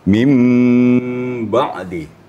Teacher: kapasitas gunanya sampai 3 ketukan kalau kita dalam tilawah ya